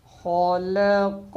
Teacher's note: آگے خا زبر خا، لام زبر ل، خال، قاف زبر قا، خالق، خالق، خا بھی موٹا اور قاف بھی، بیچ میں لام ہے، لام کو باریک کرنا ہے